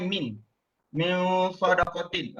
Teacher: kita dengung, kemudian kita letakkan kita punya lidah itu mengikut makhraj huruf sad. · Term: ikhfa hakiki